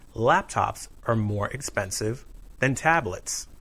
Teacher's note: The word than is usually unstressed. Be verbs are also unstressed.